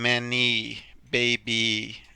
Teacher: when it's at the end of a word with more than one syllable y tends to sound like a long e